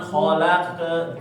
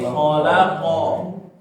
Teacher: Di huruf qaf, qalqalah dipantul, jangan ke ya, jangan khalaq ke, tapi khalaqo.